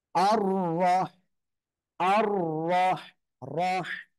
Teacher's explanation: রর উপরে জবর রয়েছে, তাহলে র অক্ষরটা কি করে পড়তে হবে? মোটা আওয়াজে পড়তে হবে।